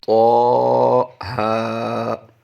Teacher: دونوں کو ہم ایک ایک الف کھینچ کر پڑھیں گے